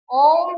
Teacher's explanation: इसमें इसका ह्रस्व स्वर का तीन गुना समय लग रहा है इसमें। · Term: प्लुत स्वर